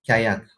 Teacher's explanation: the palate form of this k sound